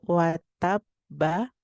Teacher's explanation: dibacanya dengan cara ditahan terlebih dahulu baru kemudian dipantulkan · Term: qqalah Akbar